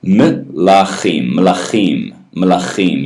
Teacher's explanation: It's a clipped kind of swallowed E sound. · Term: vocal schwa